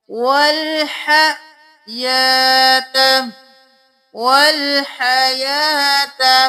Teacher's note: یا کے اوپر کھڑی زبر ہے ایک الف کے برابر کھینچے